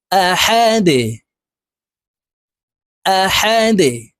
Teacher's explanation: দাল কলকলার হরফ নিচের দিকে ধাবিত করে ধাক্কা দিয়ে উচ্চারণ করে দালকে সাকিন করে ফেলবো